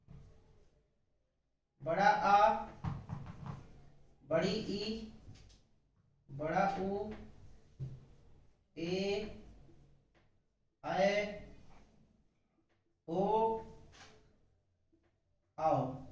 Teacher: इनके उच्चारण में 2 मात्रा का प्रयोग होता है, यानी जो ह्रस्व स्वर हैं उनकी तुलना में इनके उच्चारण में दुगने समय का उपयोग होता है। इस तरह से ये दीर्घ स्वर हो गया।